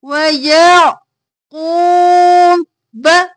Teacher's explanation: عین ساکن رکھنا ہے قاف موٹا پڑھنا ہے اور واو مدہ ہے قاف کو کھینچنا ہے وَيَعْقُوبَ جلدی سے